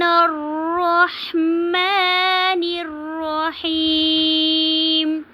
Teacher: अब जब हमने मिला के पढ़ा तो हमने जो है यहाँ पे मद्दे जो आर्जी की थी वो नहीं की, या को हमने ज़्यादा लंबा नहीं किया, और नून को हमने रॉ के साथ मिलाकर पढ़ा, और इसको हमने जो है जब रहीम पे हमने वक्फ़ किया तो यहाँ पे हमने मद्दे वक्फ़ी की।